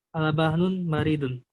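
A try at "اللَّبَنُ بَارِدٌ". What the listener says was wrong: Al-labanu, nggak pakai tanwin ya.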